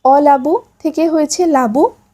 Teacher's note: শব্দের প্রথমের স্বরধ্বনি লোপ হলে তাকে আদি স্বরলোপ বলে।